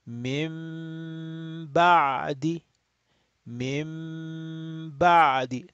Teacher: we will say mim ba'di, and we have to stretch the gunna.